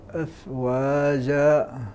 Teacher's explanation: انت لا تفخم الفاء الفاء مرققه